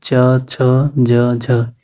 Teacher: च, छ, ज, झ हिंदी में स्पर्शी संघर्षी हो गए, हिंदी में जाने के बाद इन्हें संघर्ष करना पड़ा।